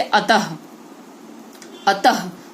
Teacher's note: ठीक है, इस स्वर का उच्चारण ह के समान, विसर्ग का उच्चारण हम जब करते हैं तो हमारे मुख से ह जैसा उच्चारण निकलता है